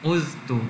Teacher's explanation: Dia tidak masukkan zal kepada ta. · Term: izhar